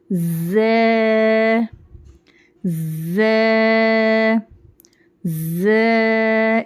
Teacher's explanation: Next حرف صفیرہ میں سے ہے یہ, اس میں سیٹی کی آواز آنا شروع میں, اور اس کا مخرج ہے زبان کی نوک نیچے کے دانتوں کے کناروں کو لگنا ہے, اور اوپر اور نیچے کے دانت اس میں ہلکے سے ملیں گے بھی. زے زے زے, اس طرح سے زے زے.